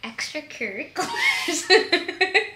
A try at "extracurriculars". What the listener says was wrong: Why do you say it like that? Extracurricular. No, you said like cur, not cure. Extracurricular. curricular?